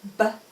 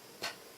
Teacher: If you say B, which is voiced, your voice box moves, but if you say P, your voice box doesn't move. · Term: voiced and unvoiced